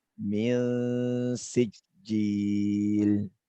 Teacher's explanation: Min di sini menjadi ikhfa ya. Mil disamarkan antara nun dengan sin ya.